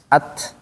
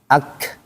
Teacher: Ta dengan kaf tidak mengalir secara suara, tetapi secara nafasnya dia ada at, ya kan? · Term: mengalir nafasnya